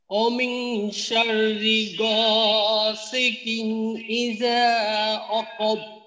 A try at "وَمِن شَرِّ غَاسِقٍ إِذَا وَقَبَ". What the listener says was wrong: আচ্ছা আলামিন ওয়াও উচ্চারণ করার সময় যেন ওয়াও জবর ওয়া, একটা হলো অকব, অ না ওয়া, ওয়া ঠোঁট গোল হয়ে তারপর উচ্চারণটা হবে। ওয়াওয়ের উচ্চারণের শুরুতেই ঠোঁট গোল, ওয়া শুরুতে গোল থাকবে, পরে জবরের কারণে ঠোঁটটা শুনবে ওয়া, ওয়াকব।